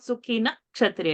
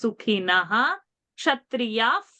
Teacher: Now because ksha is coming, we have to chant this visarga full. It is not sukhina kshatriya.